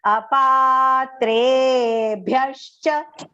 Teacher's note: both the pa and the tre are long, and there is aghat on top of that, but recite it long first.